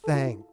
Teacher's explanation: le premier son th qui est remplacé par T c'est un son ce qu'on appelle non voisé ça veut dire qu'il n'y a pas de vibration des des cordes vocales lorsqu'on le dit